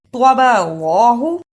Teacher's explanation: توا کی جگہ پر تا کی آواز نہیں آنی چاہیے، توا کو موٹا پڑھنا ہے